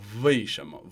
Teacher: converting the bilabial semivowel w into a bilabial fricative